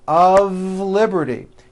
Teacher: notice how I connected the word of with the word liberty.